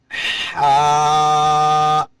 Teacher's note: حلق کے 3 حصے ہیں، درمیانہ والا حصے سے ہا ادا ہوگا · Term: مخرج